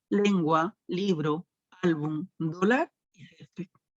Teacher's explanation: Luego también por el lugar de la sílaba tónica o del acento, vamos a tener a las palabras graves o llanas, o también conocidas como paroxítonas. Y estas palabras tienen la mayor intensidad en la penúltima sílaba, como son las palabras lengua, libro, álbum, dólar y césped.